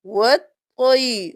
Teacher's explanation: یہاں پر ہم اس الف اور اسلام کو نہیں پڑھیں گے، ہم واو کو طا کے ساتھ ملائیں گے اور طا موٹا پڑھیں گے